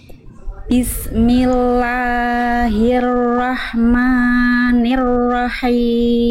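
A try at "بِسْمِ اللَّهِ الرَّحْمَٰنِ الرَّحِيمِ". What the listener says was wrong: Yang ini jangan kepanjangan Bunda. Nah, kita khawatir kalau terlalu panjang jadinya salah besar. Kayak nambahin mad, kayak nambahin alif baru, kepanjangan ya. 2 harokat. Bismillahirrahmanirrahim.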